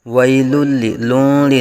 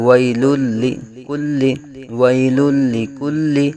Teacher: وہ متحرک یا ساکن سے پہلے زبر یا لین کا قاعدہ ہوگا، بغیر کھینچے بغیر جھٹکا دیے نرمی سے معروف پڑھا جائے گا، اور لام کے اوپر دو پیش کی تنوین ہے اور اس کے بعد حروف یرملون میں سے لام آ رہا ہے۔ یہاں ادغام میں بلا غنہ یعنی بغیر غنہ کے یہاں ادغام ہوگا